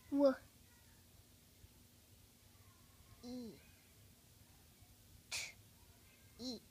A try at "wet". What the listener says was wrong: Let's try a short vowel sound for E. That means eh.